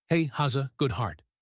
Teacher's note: In fast speech, has a becomes haza.